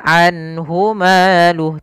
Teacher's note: Yaitu suara nunnya dibaca dengan jelas karena dia bacaan izhar.